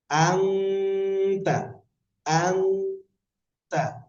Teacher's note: নাকের বাসিতে নিয়ে গুণনা করে পড়তে হবে। আংতা, আংতা, নাকের বাসিতে নিয়ে গুণনা করে পড়তে হবে।